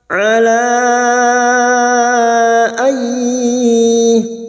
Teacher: Nun sukun bertemu ya, idgham bi gunnah, siap masuk dan mendengung, masuk pada huruf ya dan mendengung selama 3 harokat.